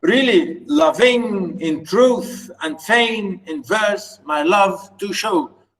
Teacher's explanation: So really loving, unstressed, stress. In truth, unstressed, stress. And fain, unstressed, stress. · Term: Iambic